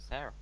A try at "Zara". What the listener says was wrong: Oh, Zara. You're saying Sarah.